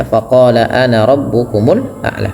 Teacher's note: pada lafal qa-nya panjang 2 harakat